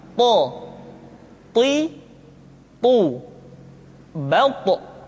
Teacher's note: Sehingga dengan dua sifat ini, maka ketika to diucapkan, suara kita terdengar menebal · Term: sifat al-isti'la